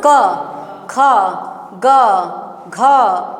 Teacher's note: क का उच्चारण स्थान होता है कंठ